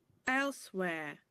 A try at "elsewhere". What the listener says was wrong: Just open a bit more and bring your tongue forward at the end.